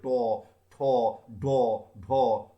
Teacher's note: উচ্চারণ করতে গেলে আমাদের জিভটা উল্টে মূর্ধাকে স্পর্শ করবে। উল্টে মূর্ধাকে স্পর্শ করার ফলে শ্বাসবায়ু বাধাপ্রাপ্ত হচ্ছে, এবং এই শ্বাসবায়ু বাধাপ্রাপ্ত হয়ে যে ব্যঞ্জন উচ্চারিত হচ্ছে তাকে বলা হচ্ছে মূর্ধন্য ব্যঞ্জন।